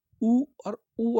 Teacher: अगर आप बोलोगे तो आपके होट जो है ये गोलाकार हो रहे हैं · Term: ओस्ट स्वर